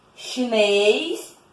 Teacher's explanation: Porque elas são oxítonas. A sílaba mais forte é a última.